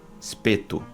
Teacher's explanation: Ver como o som de i abaixou para um e